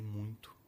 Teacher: As pessoas dizem muito e nasalizam o I de muito, o que é muito comum.